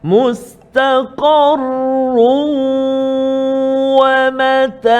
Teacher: Tanwin run tu bertemu dengan waw. Masukkan tanwin tu ke dalam waw. Syarat dia juga kena ada dengung ma'al gunnah. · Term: idgham ma'al gunnah